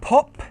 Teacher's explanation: with every /p/ sound, the paper moves Because of that puff of air from your mouth